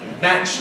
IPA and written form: mæʧ (match)